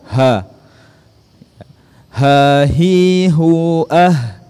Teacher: Ha keluar dari pangkal tenggorokan seperti huruf hamzah.